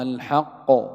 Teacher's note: وهذه القلقلة التي نسمعها هي قلقلة القاف المتطرفة، لأن المدغم لا يقلقل، لو قلقل المدغم لفك الإدغام، فالقاف الأولى لا تقلقل، هي مدغمة.